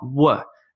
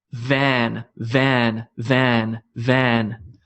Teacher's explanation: there's no rounding of the mouth this is purely bottom lip on top teeth